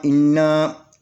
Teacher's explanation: الف زیر نون، ان نون زبر نا، انا، یہ نون کے اوپر 3 کی غیر اور اشاد ہے، تو اس کو اپنے مخرج میں سختی سے پڑھیں گے اور اس کو نون کو ڈبل پڑھیں گے، اور شاد ہونے کی وجہ سے اس کے اوپر 2 حرکت کے برابر غنہ کریں گے